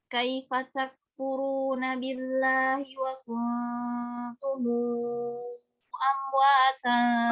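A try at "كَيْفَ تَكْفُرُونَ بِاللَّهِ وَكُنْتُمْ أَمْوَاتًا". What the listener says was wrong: Masih kurang, masih kurang. 6 harokat ya, 6 harokat.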